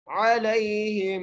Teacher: हा को मीम से मिलाते हुए गुन्ना करना है, दरमियान वाली मीम को नहीं पढ़ना